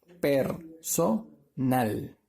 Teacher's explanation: La mayor fuerza de voz de la sílaba tónica es en la última sílaba, ¿verdad? Ahora, las dos sílabas anteriores, son sílabas átonas.